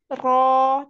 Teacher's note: ujung lidah dan sedikit punggung lidah bertemu dengan gusi atas di depan ya ro tetapi pangkalnya juga ikut naik ketika fathah ro ro